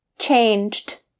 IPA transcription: tʃeɪn-tʃt